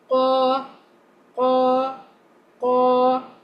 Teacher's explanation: qaf, it is heavy but it does not have any scratching sound in it. Like you have to recite it like qa, qa, qa.